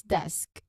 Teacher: When you say desk, notice how the S sounds fluently directly into the K sound right at the end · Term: SK cluster